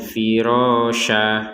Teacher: tulisannya itu firosyan tapi barusan kita bacanya firosya nah ini namanya Mad Iwat jadi Mad Iwat ini adalah tanwin fathatain ini yang karena kita